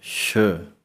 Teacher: ਸਸੇ ਪੈਰ ਬਿੰਦੀ ਆਵਾਜ਼ ਕੱਢਣ ਦੇ ਨਾਲ ਮੂੰਹ ਦੇ ਵਿੱਚੋਂ ਹਵਾ ਇੱਕਦਮ ਬਾਹਰ ਨੂੰ ਨਿਕਲਦੀ ਹੈ